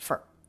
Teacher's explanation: It's almost like we don't have a vowel here. It's the F sound and then the schwa R sound. And R absorbs the schwa, so they're just one sound.